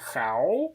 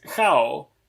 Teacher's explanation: So even though in Mandarin the word is pronounced how, in LIDEPLA it's how, ending with o and not u